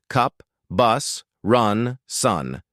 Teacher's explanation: jaw relaxed, lips completely neutral. No rounding at all. Tongue in the center and low. It is a very short unstressed sound. Let go of any tension.